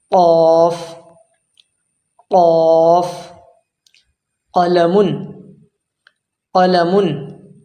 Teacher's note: قاف جو اندر حلق کے اندر کوا سا ہوتا ہے وہاں سے نکلتا ہے یہ حرف